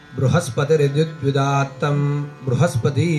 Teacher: भ्रू आणि स्प ही दोन अक्षर त्याच्यामध्ये उदात्त आहेत म्हणून ते द्विदात